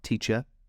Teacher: we have the /ə/ as in ‘teacher’, okay, that’s more British English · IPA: /ˈtiːʧə/